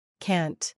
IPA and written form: kænt (cant)